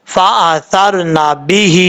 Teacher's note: ہا کے نیچے کھڑی دیر ہے، ایک الف کی مقدار اس کو لمبا کر کے پڑھیں گے